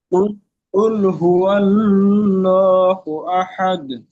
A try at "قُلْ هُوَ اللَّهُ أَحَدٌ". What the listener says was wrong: ওয়াল বলে একটু গুন্না মতো হচ্ছে, গুন্না হবে না। ওয়াও লাম সর ওয়াল, ওয়াল গুন্না হবে না। কপ ত বা জিম দাল এই পাঁচটি অক্ষরের মধ্যে লাম নেই।